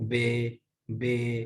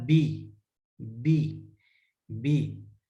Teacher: آپ نے نیچے والے ہونٹ کو نیچے مائل ہی نہیں کیا، آپ کی آواز نیچے نہیں گئی، اس لیے بے ہوا ہے. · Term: مجہول